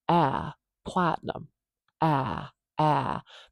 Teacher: this is that low front vowel the Trap vowel